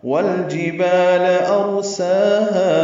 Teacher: واو ہونٹوں کی نہ تمام گلائی سے ادا کریں گے